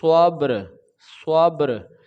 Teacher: پھر را کو تکرار کے ساتھ ہم وقف کر دیں گے · با کو جنبش کے ساتھ یعنی کہ آواز لوٹ کر آئے گی، یہاں پہ قلقلہ ہوگا، جنبش پیدا ہوگی